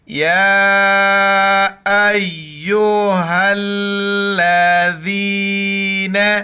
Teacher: ذال کے وقت زبان باہر نکالنا ہے۔ · حمزہ کے اوپر کڑا زبر ہے، ایک الف کی مقدار کھینچنا ہے اور نون کو تا کے ساتھ ملائیں گے، بیچ میں واو اور الف نہیں پڑھا جاتا۔